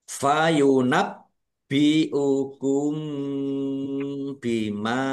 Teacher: ada tasdidnya dibaca dobel ditekan dan ditahan biar tampak dobel